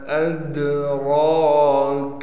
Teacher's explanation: हमज़ा को दाल से मिलाएंगे क़लक़ले के साथ। रा पर कड़ा ज़बर होने की वजह से रा को एक अलिफ की मिक़दार खींच कर पढ़ेंगे।